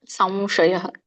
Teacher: ಇಲ್ಲಿ ಸಂ ಬರ್ಬೇಕು, ಮೂಗಿಂದ ಸಂಶಯ